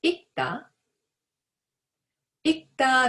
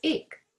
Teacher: read a dictionary form 읽다 or a verb stem 읽 with the sound of 기역 as a 받침